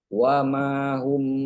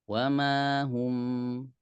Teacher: Hu maju bibirnya, em-nya mundur.